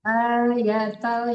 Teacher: Inna fi zalika la ayatan liqaumin yatafakkarun. Ayatal, ya-nya tidak panjang. Ya, A-nya aja yang panjang.